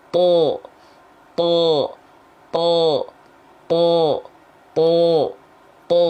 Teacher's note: bunyi vokal O yang dihasilkan karena pangkal lidah kita naik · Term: istila